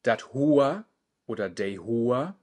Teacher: Dat Hoa oder Dei Hoa, das Haar, die Haare, das sprechen wir heute in der großen Gegend des Plattdeutschen mit OA